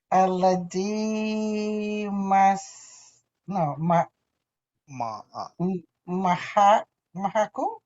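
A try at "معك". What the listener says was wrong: Ma'aka. Not mahaka. It's mim ain kaf. So ma'aka.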